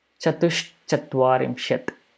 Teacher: Visarga gets changed to Shakara.